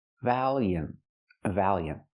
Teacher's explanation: The T is a stop T.